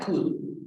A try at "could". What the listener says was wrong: No, sin la L, could. Could, yes, como con la D, could, como si fuera C-U-D, could.